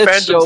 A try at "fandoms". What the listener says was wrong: I love how you don't even say it like fandoms. You say it's the way you say it is phantoms with a PH.